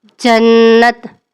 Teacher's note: مخرج زبان کے درمیانی حصے کو اوپر کے تالو چھت کے ساتھ ملا کر ادا کریں گے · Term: جیم